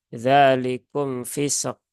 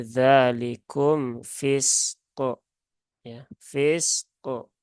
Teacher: Yang pertama sin sukun, yang kedua qaf sukun. Maka qafnya wajib sukun dan qafnya wajib qalqalah ya.